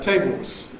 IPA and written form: ˈteɪboz (Tables)